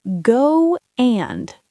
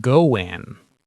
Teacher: we add a W sound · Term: add a sound